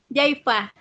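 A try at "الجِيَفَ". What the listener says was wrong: Bukan ini Om. Tadi tuh jia ya-nya fathah. Jia fa.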